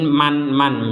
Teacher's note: Nun sukunnya terbaca dengan jelas tidak samar lagi